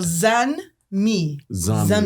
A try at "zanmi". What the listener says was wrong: Don't pronounce the N. Yeah, just Zami.